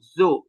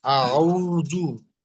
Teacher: আপনার আউযুবিল্লাহর মধ্যে ওই যে যেটা বললাম, জালের উচ্চারণটা আরো চিকন, যতটা চিকন করা যায় একদম জিহ্বার আগা থেকে করলেই দেখবেন চিকন হয়ে যাচ্ছে। আউযু জু এইভাবে জু বললে ওটা যা হয়ে যাবে, না হয় জিম হয়ে যাবে, না হয় জ হয়ে যাবে, যা লাগ উচ্চারণ হবে না।